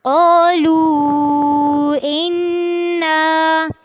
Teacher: قالو میں قاف اور الف دونوں پر ہوں گے، لو میں مد کرنی ہے، انا میں ان پہ پہلے غنہ کرنا ہے اور پھر نون کو لمبا کرنا ہے، قالو انا۔